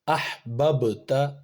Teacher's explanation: ہا حروف قلقلہ میں سے نہیں ہے تو اس کی آواز ٹکرا نہیں رہی کہیں بھی، ہا کو بس حمزہ کے ساتھ میں ملا دیا اور ختم، آواز نہیں ملی۔